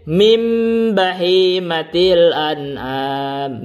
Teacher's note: nunnya berubah menjadi mim karena ini adalah iklab